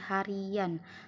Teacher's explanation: ada huruf Y yang terselip, jadi dibaca menjadi harian karena huruf Y ini sebagai huruf pelancar. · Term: bunyi pelancar